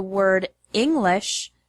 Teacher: the word English has the stress on the first syllable